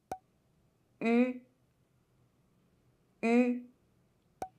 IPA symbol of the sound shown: ɥ